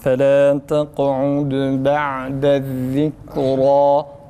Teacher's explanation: Ra tam kalın A'si çıkarılarak okunsun arkadaşlar.